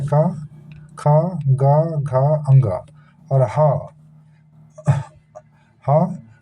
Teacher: इन सभी वर्णों का उच्चारण कंठ से होने के कारण इन सभी वर्णों को क्या कहते हैं दोस्तों? कंठ्य वर्ण कहते हैं।